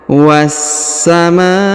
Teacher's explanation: Kemudian huruf ma dipanjangkan 5 harokat karena di atasnya terdapat tanda garis panjang 5 harokat ya.